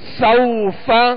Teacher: حروف لین کو نرمی کے ساتھ ادا کرنا ہے، بغیر کھینچے، بغیر جھٹکا دیے، نرمی کے ساتھ معروف پڑھنا ہے.